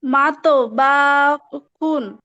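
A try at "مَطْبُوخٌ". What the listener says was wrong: বাতা টান হবে না, আবার।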